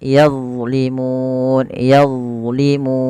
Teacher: padahal huruf d bukan huruf mantul dia tidak boleh mantul